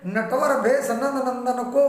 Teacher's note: इसमें दंत्य और ओष्ठ स्थानों से उच्चारित वर्णों की आवृत्ति बार बार हुई, इसलिए श्रुत्यानुप्रास अलंकार।